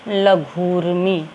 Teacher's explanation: पहले शब्द का आखिरी वर्ण है ह्रस्व ऊ और दूसरे शब्द का पहला वर्ण है दीर्घ ऊ, लेकिन जब मेल करेंगे तो यहाँ बनता है दीर्घ ऊ और जो शब्द बनेगा वो होगा लघूर्मी।